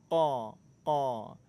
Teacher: Huruf qaf makhrajnya pertemuan antara pangkal lidah dengan langit-langit lunak.